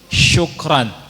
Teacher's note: Yang benar syukran dengan syin. Syin itu tengah lidah. Kalau sin biasa di ujung lidah.